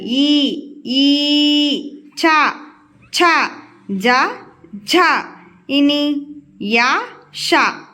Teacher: తాలు అంటే దవడ అవి పలికేటప్పుడు మనం దవడ నుంచి పలుకుతాం అన్నమాట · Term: తాలవ్యాలు